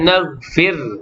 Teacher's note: Kemudian naghfir, ra yang sukun dalam kalimah ini, ra yang tarkik nipis.